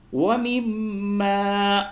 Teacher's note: میم مشدد ہے غنہ ہوگا